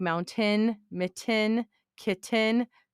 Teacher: most people on this side of Montana swallow their T's, and words like mountain, mitten, kitten, people just swallow that.